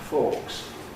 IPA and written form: fɔːks (forks)